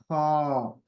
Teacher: ऊपर के हलक के हिस्से से जैसे हम गला साफ करते हैं